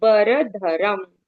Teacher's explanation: र के ऊपर जो अनुस्वार है उसको म के जैसे बोलना है